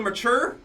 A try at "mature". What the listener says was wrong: no M-A-T-U-R-E, it's M-A-C-H-U-R-E. Mature. Mature.